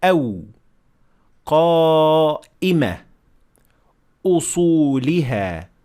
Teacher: as for the Hamza, it cannot be extended since the nature of the sound itself comes from cutting airflow passing through your throat. So it cannot be extended.